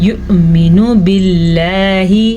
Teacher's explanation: حمزہ کے اوپر ساکن ہے تو حمزہ جھٹکے کے ساتھ پڑھا جائے گا، جبکہ نون کے اوپر پیش ہے تو اسے کھینچنے کی غلطی مت کیجیے گا.